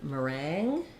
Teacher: in meringue we have second syllable stress and it's just like the word rang like I rang the